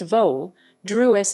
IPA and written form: ˈʋoːdɾuʃ (Vodruž)